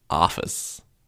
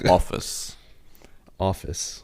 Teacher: the ah sound is the American version.